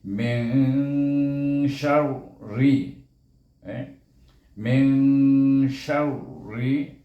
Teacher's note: Kita membacanya antara izhar bunyinya min kalau izhar, kalau idgham mish bunyinya kalau idgham. Jadi bacanya antara izhar dengan idgham, iaitu bunyinya Min, huruf lidah itu nak pergi kepada huruf shin. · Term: hukum ihfa